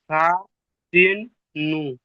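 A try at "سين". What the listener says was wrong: এটা যদি সা হয় তাহলে এটা কি করে সিন হবে? সিনের তো তিনটে দাঁত।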